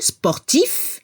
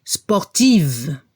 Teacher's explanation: Al masculino se escucha la F, al final, sportif. Y al femenino, la V, sportive.